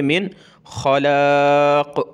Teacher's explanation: यहाँ आगे हरूफ हल्की का वर्ड है, इसलिए यहाँ नाक में आवाज़ पैदा नहीं करेंगे, इजी पढ़ेंगे, मिन खलाक़।